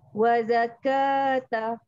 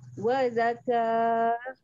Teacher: Dan ta marbutah jadi ha bila kita berhenti.